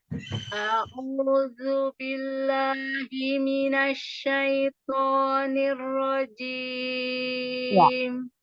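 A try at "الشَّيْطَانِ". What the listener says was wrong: Syaito. Jangan pakai mulut, jangan pakai bibir. Syaito, biar dia tebal. Syaitonir rajim. Huruf to. To. Angkat. Tangannya angkat. To. To. To. To. Syaito. Syaito.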